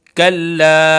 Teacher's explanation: कल्ला मद्दे मुनफसिल है, 2 से 3 अलिफ के बराबर खींचेंगे।